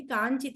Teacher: మకారం అనుస్వారం కాబట్టి అనునాసికంగా మారిపోయింది